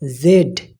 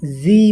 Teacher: জেড ব্রিটিশে জেড এবং আমেরিকার উচ্চারণে জি বলা হয়।